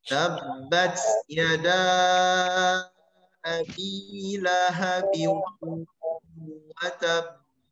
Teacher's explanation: Diidghamkan atau dimasukkan sehingga ditambahlah ba tasydid di sana. Maka dua ba yang terbaca harus ditahan dulu pada makhrajnya. Makhraj huruf ba itu dua bibir. Watab tahan nempel ba.